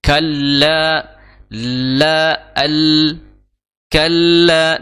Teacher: makhrojnya La itu di ya ujung lidah ya bertemu dengan ee gusi depan ya bagian atas Kalla la Al Kalla di situ ada tasdid jadi ditahan ya